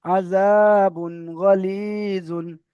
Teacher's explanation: তানবিনের আওয়াজকে বিনা গুণনায় জাহির করে তাড়াতাড়ি পড়তে হবে। গয়নের উপরে যাওয়ার আছে, যাওয়ারটা হারাকাত, হারাকাতে পড়া তাড়াতাড়ি পড়তে হয়, টান দেওয়া নিষেধ।